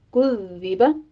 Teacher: آپ نے اس کو سیٹی کی آواز کے ساتھ نہیں پڑھنا ہے، زال کے نیچے کسرہ ہے، آواز باریک رکھیے گا